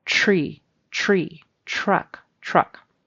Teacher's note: that TR is sometimes pronounced as really a CHR, at least in the western side of the United States. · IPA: /ʧɹ/